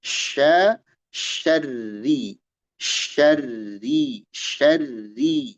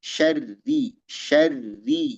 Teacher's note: Syin dan ro dibaca tipis jangan tebal.